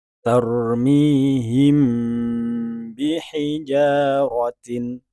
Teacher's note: cara membacanya juga dengan dengung dalam arti melewatkan atau mengeluarkan bunyi melalui rongga hidung dan juga menahannya untuk beberapa harakat ada yang mengatakan minimal dua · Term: Ikhfa Syafawi